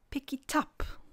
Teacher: the last consonant of the first word is joined to the vowel sound at the start of the second word for example pick it up you will hear something like picky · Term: catenation